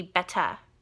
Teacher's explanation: the r sound is dropped completely